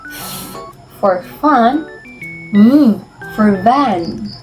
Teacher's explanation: produced with the lower lip touching the upper front teeth